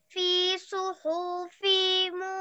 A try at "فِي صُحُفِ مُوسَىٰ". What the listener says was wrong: What exactly صحف؟ Is extended, but صحف. صحف. Don't extend it.